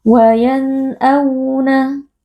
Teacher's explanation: tetap ada aliran sifat bainiyah dan gunnah dari huruf nun ini, tapi gunnahnya itu tidak dipanjangkan atau bukan gunnah mutawwalah ya. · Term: izhar